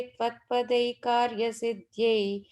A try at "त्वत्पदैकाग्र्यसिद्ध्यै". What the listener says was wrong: Tvatpadai Khagriya. It's a gra there. Tvatpadai Khagriya Siddhyai.